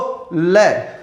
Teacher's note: पार्श्व का मतलब होता है बगल। ऐसे व्यंजन जिनको बोलते समय वायु जीभ के दोनों बगल से बाहर निकलती हो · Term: पार्श्विक व्यंजन